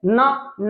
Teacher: ना बोलते हैं तो दंत में जीभ लगती है और नाक से भी आवाज निकलती है, तो दंत और प्लस नासिका बोलते हैं।